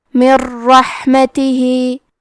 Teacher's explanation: ادغام کا معنی ہے حرف کو حرف میں داخل کرنا تو ہم نون ساکن کو را میں ملا کے بغیر غنہ سے لیکن تشدید کے ساتھ یہ حکم کو ادا کریں گے